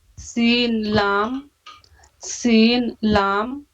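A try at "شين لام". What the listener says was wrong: شین نکالیے اس میں، شین لام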